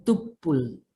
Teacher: dalam bahasa Mandailing M-nya hilang ya, menjadi tupul